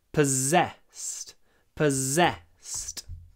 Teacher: this is quite a strange word because the double S is pronounced Z.